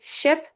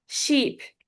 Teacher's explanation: I say the vowel in the first one very shortly while I say the vowel in the second one very long longer than the other one because it makes a difference even though they seem like they sound the same. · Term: vowel length